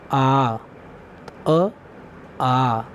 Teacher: अ की अपेक्षा 2 गुना समय लगता है, जैसे आ, अर्थात अ से 2 गुना समय लगा।